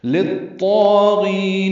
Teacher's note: لام کو طا سے ملائیں گے، ادغام شمسی